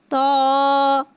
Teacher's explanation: تو حرف مستعلیہ ہے، لہٰذا اس کی آواز حلق سے موٹی ادا ہوئے گی.